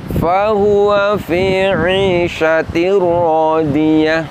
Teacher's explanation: ke salah satu dari huruf ro atau huruf lam di mana bunyi Nun sukunnya hilang berganti dengan bunyi huruf ro atau huruf lam tanpa ada bunyi dengung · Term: idgham bila gunah